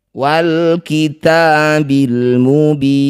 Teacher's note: Baca jelas bunyi lam sukun. Jangan tawalud atau diseret-seret. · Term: izhar qamariyah